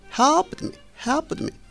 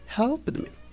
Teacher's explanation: you connect helped and me